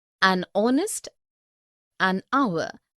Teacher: an honest an hour because the words air honest and our begin with the vowel sound as the initial consonant h is not pronounced